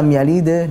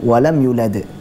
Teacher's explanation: Yang pertama, lam yalid itu qalqalah sugro namanya, qalqalah kecil, sehingga kadar pantulannya lebih kecil daripada qalqalah kubro yang di akhir